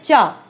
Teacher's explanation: तो ये अग्रभाग कठोर तालु को स्पर्श करता है च, छ, ज, झ, या, शा बोलते समय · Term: तालव्य वर्ण